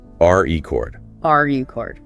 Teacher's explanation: As a noun, like a vinyl record or setting a world record, the stress is on the first syllable.